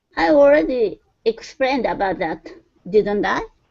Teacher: A little bit rising intonation. She's kind of a little bit questioning.